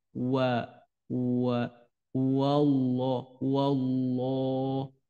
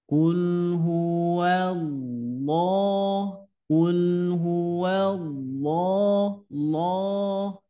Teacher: Intinya ketika ngucapin wa-nya jangan bulat ya. Si bibi jangan wa wa wallah wallah.